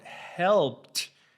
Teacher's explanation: the P before the ed does not make your vocal cords vibrate. Therefore, it doesn't have a voice. So you have to produce the T sound.